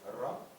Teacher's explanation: Vous trouvez le R, un R très guttural